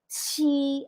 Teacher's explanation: Again, Q is TS with hangin.